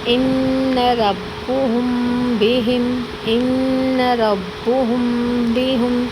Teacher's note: میم ساکن کے بعد با آئے تو میم ساکن کو غنہ کے ساتھ پڑھیں گے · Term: اخفا